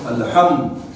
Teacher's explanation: الحم میم ساکن کا اظہار شفوی ہوگا. میم ساکن کا اظہار شفوی ہوگا اس لیے کہ میم ساکن کے بعد میم اور با کے علاوہ میم ساکن کے بعد میم اور با کے علاوہ دال آئی ہے.